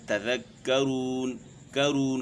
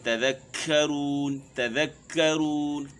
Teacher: کاف ہو گیا اور تا ہو گیا، اس میں ہم ہمس نہیں پیدا کرتے ہیں، لیکن فصیح عربی میں، عرب کے قرآن جو ہے اس میں ہمس پیدا کرتے ہیں